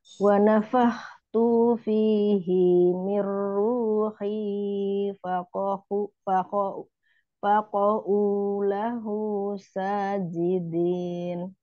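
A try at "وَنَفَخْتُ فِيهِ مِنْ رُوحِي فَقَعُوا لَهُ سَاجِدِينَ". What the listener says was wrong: Wa nafakhtu tuh-nya pendek ya, jangan dipanjangkan. Fihi juga hina pendek.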